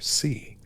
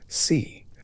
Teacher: The tones are different. Four is spoken with a falling tone, death with a falling rising